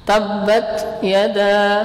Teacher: Nah, hal yang harus kita perhatikan dari sifat hamas yang ada pada huruf ta ini, yaitu jangan berlebihan. Jangan berlebihan di dalam menghembuskan udara. Nah, di saat kita mengucapkan huruf ta. Nah, jadi hamasnya itu tidak terlalu kuat dan tidak pula sampai hilang.